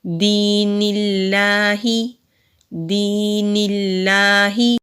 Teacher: نون کے نیچے زیر ہے، آگے لفظ اللہ ہے تو یہاں لام جلالہ سے پہلے زیر آئی تو یہاں ہم لام جلالہ کو باریک پڑھیں گے